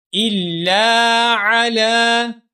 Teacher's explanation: حمزہ کو لام مشدد کے ساتھ ملائیں گے اور لام مشدد کو ایک الف کے برابر لمبا کریں گے، کیونکہ یہاں پر الف مدہ ہے، ٹھیک ہے؟